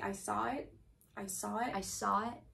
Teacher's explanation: we would definitely not use that intrusive r that you were talking about